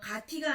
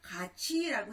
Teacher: 가티가 아니라 가치라고 해야 맞죠? 티읒이 치읒으로 바뀌었고요.